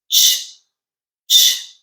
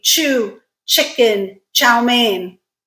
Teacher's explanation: the ch sound is a combination of t and sh together